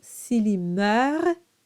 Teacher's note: you pronounce the R, but not the extra consonants.